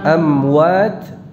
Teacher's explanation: Ini mimnya dibaca dengan idhar, jelas idhar syafawi. Namun di sini peringatannya jangan dibaca dengan ikhfa.